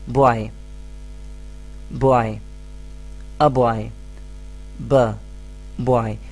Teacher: the initial sound does not come from the throat, but it is produced using your lips. So the initial sound is a consonant sound.